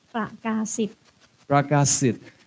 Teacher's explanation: In Thailand, you put the stress on the last syllable. It's not Pragasit, but it's Pragasit, like that.